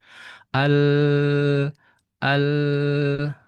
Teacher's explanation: Makhraj dari huruf lam itu adalah ujung tepi lidah ke langit-langit belakang nun. Jadi dia bertetangga dengan huruf nun.